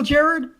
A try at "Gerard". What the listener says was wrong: Neither of you are pronouncing the last syllable. Are you saying Gerard or Gerard?